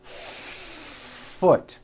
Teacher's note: Do you see how long I am holding that F? · You need to hear the air friction